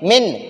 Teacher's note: اب ہم نون ساکن میں غنہ نہیں کریں گے، نون ساکن کو ظاہر کریں گے